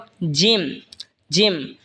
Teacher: জিহবার মধ্যখান তার বরাবর উপরে তালের সঙ্গে লাগে উচ্চারণ হবে জিম